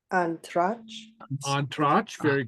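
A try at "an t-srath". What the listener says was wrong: On Trotch. Very good. On Trotch.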